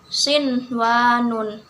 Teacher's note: Di situ terdapat nun mati bertemu dengan huruf wawu dalam satu kata, jadi nun matinya dibaca jelas. Kemudian hukum bacaan ini disebut juga dengan izhar mutlak, dan izhar mutlak ini hanya ada 4 di dalam Al-Quran.